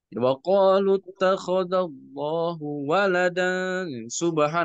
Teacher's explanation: Allah Allah Subhanahu wa taala berfirman ya eh waquallahu ya di sini wala dan subhana ya di sini kalau misalkan kita talaqi kepada mas dari Madinah di kata Allah itu enggak boleh ada penekanan sama sekali bahkan suaranya disuruh lirihkan, dipelankan